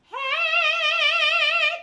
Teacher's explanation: there's nothing in my nose. So that's oral twang.